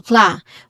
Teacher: Clarify has stress on the first syllable, kla, with a short a sound